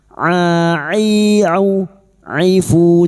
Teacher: Huruf ain wastul halqi, tengah tenggorokan